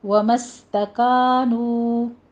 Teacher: سین کے اوپر سیٹی کی آواز ہوگی، ومستکانو، کا اور نو دونوں جگہ آپ نے کانو نہیں کہنا، ناک میں آواز نہیں جانی چاہیے، کانو جیسے کا ہے اسی طرح نو بھی، الف مدہ ہے، واو مدہ ہے، 2 کاؤنٹ کیجیے۔